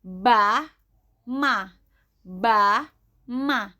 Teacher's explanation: dikeluarkan dengan merapatkan kedua bibir